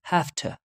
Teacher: where the V sound assimilates to a voiceless sound F sound how you know for example after that there is T sound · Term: assimilation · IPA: [hæftə]